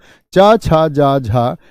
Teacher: ये चारों के चारों आपके स्पर्श संघर्षी होते हैं। स्पर्श संघर्षी ये जीभ के स्पर्श के आधार पर हम कहते हैं।